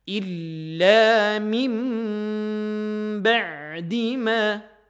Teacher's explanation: Nun sukun ketemu dengan ba. Kita tutup bibir. Walaupun ada pendapat yang membaca dengan furjah ya. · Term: iqlab